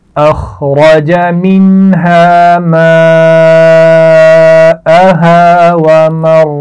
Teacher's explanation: ومرعاها را کو موٹا پڑھا جائے گا، اس کے بعد عین اور ہا دونوں کے مخرج کا خیال رکھنا ہے. · ماءها بڑی مد ہے، خوب کھینچ کر پڑھیں گے